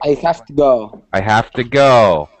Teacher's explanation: the V sound turns into an F